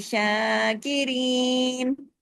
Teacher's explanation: شاہ کیوں کھینچا؟ کھڑی زبر کی وجہ سے، کھڑی زبر کتنا کھنچتی ہے؟ الف مدہ کے برابر